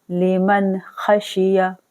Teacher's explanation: نون ساکن کے بعد کھا آ گیا ہے حروف ہلکی میں سے تو ہم یہاں پر نون کا اظہار کریں گے